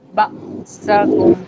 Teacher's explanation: یہاں پہ ہم حمزہ کو جھٹکا دے کے پڑھیں گے